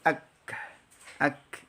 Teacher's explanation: Kaf itu memiliki sifat syiddah dan juga al-hams ya. Syiddah kuat ya, bunyi ditahan tetapi suara keluar bersama keluarnya huruf. Jadi ak gitu ya.